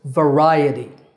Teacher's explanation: with the stress on the second syllable, ri.